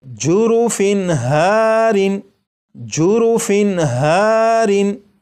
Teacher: تنوین کے نون ساکن کو ظاہر کر کے پڑھا گیا